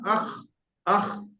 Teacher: দেখবেন একটা মানে খসখসে মতো লাগছে আপনার গলায়, আখ, আখ। তাহলে ভাববেন আপনার খ উচ্চারণ হচ্ছে।